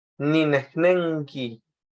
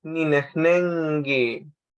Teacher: la K suena a G porque después de N va a sonar a G